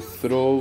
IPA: θroʊ